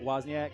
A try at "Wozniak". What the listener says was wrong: Wozniak, the W is not silent.